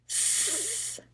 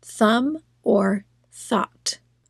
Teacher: So now say your digraph TH without a vibration. Stick your tongue out and say th. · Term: voiceless TH